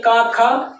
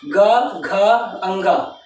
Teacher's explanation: प्रथम 2 व्यंजन जो होते हैं वो हमारे कहलाते हैं अघोष व्यंजन